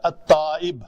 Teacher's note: تو یہ تشدید کے ساتھ تائب، تو یہ لام نہیں پڑھتے ہم